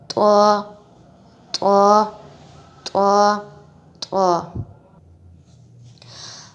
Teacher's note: صرف اس کو جب ہماری زبان صحیح جگہ پر لگے گی تب ہی صحیح مخرج ادا ہوگا۔ زبان کی نوک ہے جو ہم نے دو بڑے دانتوں کے پیچھے جو ان کی جڑ ہے اس سے لگانی ہے، تب یہ مخرج ادا ہوگا۔